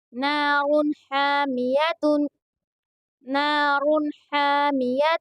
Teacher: تنوین کے بعد میں ہا آیا ہے، حروف حلقی کے 6 حرفوں میں سے ہا ہے، اس لیے یہاں پر اظہار ہو رہا ہے، اس لیے یہاں پر غنہ نہیں کریں گے، جلدی پڑھیں گے، اور یہاں پر الف مدہ بھی ہو رہا ہے اس لیے ہا کو تھوڑا کھینچ کر پڑھیں گے۔